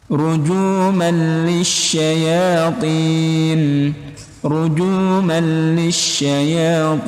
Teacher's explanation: Juh man lisyayatin, man lisyayatin ini hukumnya di malli alif lam, bukan alif lam tapi idgham bila gunnah. Idgham bila gunnah tanpa dengung teman-teman